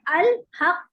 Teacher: अगर हम इसको वक्फ कर रहे हैं, साकिन पढ़ रहे हैं, तो फिर हम इसको पढ़ेंगे तबाउद लेकिन मुंह और जबड़े की हरकत के बगैर, तो पढ़ेंगे अल हक, अल सॉरी अल हक, ठीक है, अल हक।